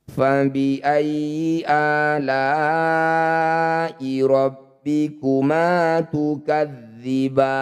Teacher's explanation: Mad tabi'i bertemu huruf hidup kemudian kita hentikan, jadilah bacaan mad arid lisukun. Ba panjangkan 6 harokat, huruf terakhir sukunkan.